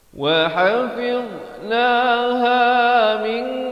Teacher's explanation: Wa hafidnaha min, di sini ikhfa hakiki, daripada min jadi min, samarkan. Nak kata nun pun tidak, kaf pun tidak, dengan kadar panjang 2 harakat